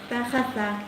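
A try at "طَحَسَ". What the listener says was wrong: Ha masih ada, jadi seperti huruf kha. Taha bukan taha tapi taha, ha. Tahasa.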